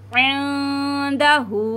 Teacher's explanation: हा को 3 अलिफ की मिकदार खींचेंगे